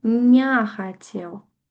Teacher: То бок у нас у транскрыпцыі ўжо будзе не «е» і не нават не «э», а ўвогуле «я». Ну, то бок «а» будзе гук.